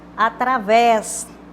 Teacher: Sílaba tônica, aquela mais forte, que a gente pronuncia com mais intensidade, a última. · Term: oxítona